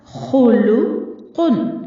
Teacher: खौ भी हुरूफ मुस्तालिया में से है और कौफ भी, तो दोनों को पुर पढ़ा जाएगा, लेकिन लाम को बारीक रखना है। खुलू नहीं पढ़ना है, लाम को पुर नहीं करना।